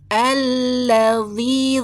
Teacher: lamnya tasdid tapi tidak boleh dengung